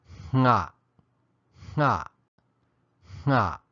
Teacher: And as if the NG wasn't hard enough to get, adding aspiration raises the level of difficulty. All we're really doing, though, is adding aspiration through the nose before and as we begin to make the NG sound. It will sound something like nga, nga, nga.